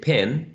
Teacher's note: since uh the a is assimilating this nality we can say that this vowel sound is nasalized